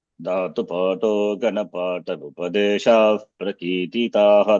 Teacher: When I chant without any pause, Dhatu-pato Ganapata Upadesha Prakititaha, the Visarga will go away, will not be pronounced.